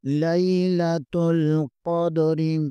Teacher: لیلۃ ال، قاف زبر کو دال کے ساتھ ملائیں گے، قاف کو پر پڑھیں گے اور دال پر قلقلہ کریں گے